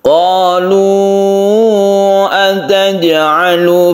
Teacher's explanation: qolu ini kita panjangkan karena dia itu Mad Jaiz munfasil